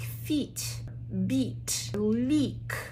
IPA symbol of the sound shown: i: